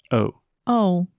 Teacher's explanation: time your tongue is moving so when you say o o so your tongue is more or less in the middle of your mouth and then you are making a circle with your lips and then when you say ah ah your tongue is back